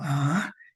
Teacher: ese es un tono ascendente que empieza bajo y termina alto